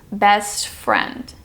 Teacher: The ST blends into the F.